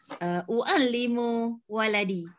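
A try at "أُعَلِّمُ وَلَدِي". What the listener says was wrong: Cantik.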